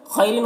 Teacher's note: खौ को पुर पढ़ना है और यहाँ पर यालीन है, इसे जल्द पढ़ना है। रिन में रॉ को बारीक पढ़ना है और तनवीर में इख्फा हो रहा है, इसकी आवाज़ को नाक में छुपा कर पढ़ेंगे।